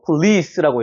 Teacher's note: 그런데 강세가 여기 있기 때문에 폴리스라고 읽으면 안 되고 police라고 해야 됩니다. police 이렇게 올라가는 발음이 되는 거예요